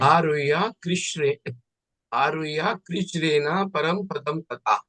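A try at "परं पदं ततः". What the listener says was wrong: Parang padang tataha. Not param. Parang padang tataha.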